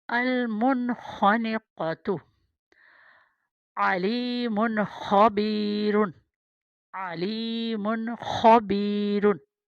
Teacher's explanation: آگے ہے خا نقطے والی، المنخنقۃ अलमुनखनिक़ातु, यानी बिल्कुल हमने यहाँ पे स्टॉप नहीं करना। नून साकिन के बाद ख़ा है और नून तनवीन के बाद ख़ा है, यानी गले के शुरू वाला, ये भी गले के शुरू से है